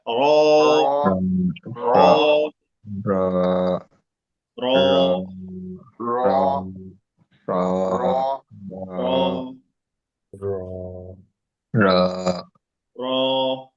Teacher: জিব্বার আগার উল্টা পিঠ, তার বরাবর উপরের তালুতে, একদম উপরে উপরে ঠেকিয়ে দিবেন জিব্বাটা উল্টায়া।